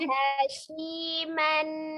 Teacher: shi-nya tadi makhrajnya bukan dari syafatain tapi dari al-lisan